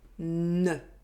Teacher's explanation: For [n], the tip of my tongue is against my upper teeth and I remove it in one go